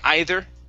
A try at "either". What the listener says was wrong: okay, but you had said etter. Okay, so yes, we do need to pronounce the TH.